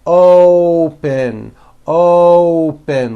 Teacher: to say this word you're not saying oppos with an a you're using that hidden W you're bringing your lips forward · you're using that hidden W, you're bringing your lips forward and you're saying open, open, like that. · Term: O sound